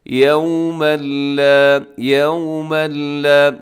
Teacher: یومًا لا، یومًا لا، یہاں پر ادغام ہو رہا ہے کیونکہ یومن پہ تنوین ہے اور تنوین کے بعد آگے لام حروف یرملون کا، اس میں نون کی آواز بالکل ختم ہو جائے گی۔